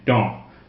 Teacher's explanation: Don't pronounce the S, it's nasal, the vowel is nasal.